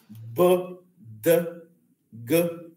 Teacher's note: Elas são chamadas de vozeadas porque as cordas vocais, as pregas vocais vibram